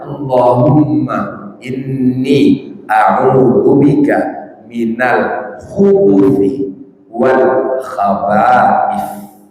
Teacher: ujung lidah menempel dengan ujung gigi seri bagian atas dan dikeluarkan sedikit